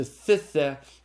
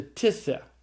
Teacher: the reduplicated theta is deaspirated to a tau